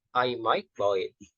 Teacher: Jadi ketika might itu memiliki intonasi yang turun, fall. Kemudian ketika selanjutnya digantikan oleh buy itu memiliki intonasi yang rise setelah itu, naik.